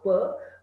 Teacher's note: in case of production of sound per, two lips are the active and passive articulator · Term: bilabial